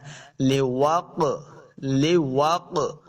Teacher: قاف حروف مستعلیہ سے موٹا بھی کریں گے، اور قاف حروف قلقلہ سے بھی ہے، تو ہم نے اس کو خوب واضح کرنا ہے۔